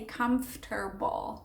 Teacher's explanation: A lot of times native speakers, especially in the US, they, even though you see comfort, the O-R, they sometimes place the R after the T